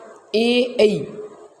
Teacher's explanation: कंठ और तालु दोनों से मिलकर बोला जाता है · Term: संयुक्त स्वर